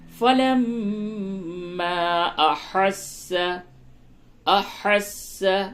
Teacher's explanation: فلما احس ہا صحیح سے ادا کریں اور یہ اس جگہ پہ میم مشدد ہے غنہ کیجئے اور مد بھی کیجئے